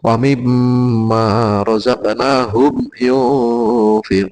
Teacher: Sekali lagi bahwa untuk yang kita biasa mengamalkan yaitu tahlilnya ini awal Al-Baqarah itu yang yunfiqun, terus ungzila min qablik, ini bacaan ikhfa nih, diingat-ingat bukan n saja tapi berubah menjadi ng atau eng dan agak dipanjangkan.